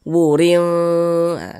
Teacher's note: kadar samar dan kadar dengungnya pun dia di tengah-tengah seimbang